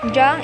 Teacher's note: be careful to pronounce as in english sing and not as an english finger where there is an additional g sound